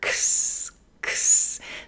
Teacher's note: a cluster, X, X, the K, K, K and S consonant together. X, X. This is frequently how the letter X itself is pronounced, that X, X.